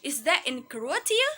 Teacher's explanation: We read the Croatia with rising tone intonation.